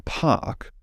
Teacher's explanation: the aspirated p in park